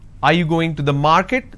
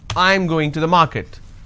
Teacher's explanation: This is going up because the last word denotes like it's a question. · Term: rising tone